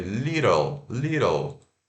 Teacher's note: Mas esse T pode ter o som de R